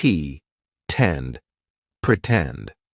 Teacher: in the word pretend, the stress syllable starts with t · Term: true t sound, true T sound